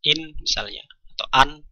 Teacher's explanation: Kalau kita mempunyai non sukun atau tanwin dan dibaca idhar, maka kita membacanya membunyikan nun sukun dengan jelas